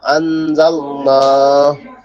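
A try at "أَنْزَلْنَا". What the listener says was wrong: আনজাল, ঝা গিয়ে শক্ত হবে।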